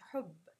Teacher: And if you do not continue that word with the next word in recitation in the Qur'an, then if you stop, it's going to turn into hub. You're not going to pronounce the tanween.